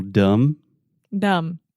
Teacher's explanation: especially when we have a word that ends with the two consonants m b the B is silent